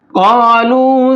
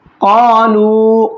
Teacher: काफ को मोटा करके पढ़ेंगे, और यहाँ वाव मद्दा है, एक अलिफ के बराबर खींच करके पढ़ेंगे।